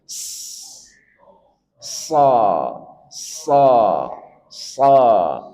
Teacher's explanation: Kemudian dia punya sifat sofir, desis.